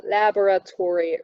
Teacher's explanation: in American English, we have a lot of secondary stress retention. So the laboratory, which I think still have too much secondary stress in it, is a laboratory, really.